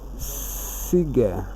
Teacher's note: c takes a stress on the first level the option they take the stress on the second syllable